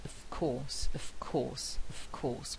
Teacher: with a very strong f sound there, and that's affected by the following sound, which is voiceless